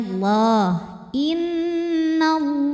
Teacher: Lam pada lafaz Allah atau lam jalalah dibunyikan secara tafkhim karena huruf sebelumnya yang nun berbaris di atas, barisnya fathah. Maka cara bacanya dibaca dengan tebal, pangkal lidah ngangkat ya. Bunyinya Allah.